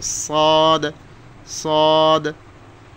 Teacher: জিহ্বার আগা সামনের নিচের দুই দাঁতের গোড়ার সঙ্গে লাগে